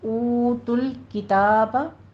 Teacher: ऊ वाव मद्दा खींचिए दोनों होंठों को गोल करके